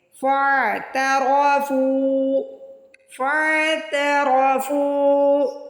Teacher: فاعترفوا، اس کو فا نہیں پڑھنا، فاعترفوا، فاعترفوا، را کو موٹا پڑھنا ہے، را کے اوپر زبر اور پیش ہو تو را کو موٹا پڑھتے ہیں۔ فا پہ دیکھیے پیش کے بعد واو ساکن آ رہا ہے، یعنی واو مدہ آ رہی ہے، تو ہم فا کو کھینچ کے ادا کریں گے